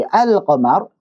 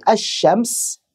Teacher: syamsiah yang paling mudah adalah setiap yang cara bacanya seperti assyams tidak jelas dimana lamnya tidak dibaca lagi tapi langsung melebur ke huruf berikutnya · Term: lam syamsiah